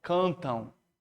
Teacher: Tá vendo como esse M no final não tem som de M, tem som de O? Cantam. Então isso aqui, ó, na verdade é um ditongo.